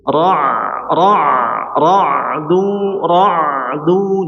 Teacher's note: Bainiah artinya setengah mengalir suaranya dialirkan setengahnya ya.